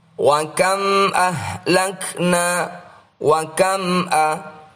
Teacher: Mim sukun yang diikuti oleh alif adalah bacaan Izhar Syafawi. Bacalah dengan jelas tanpa nasalisasi.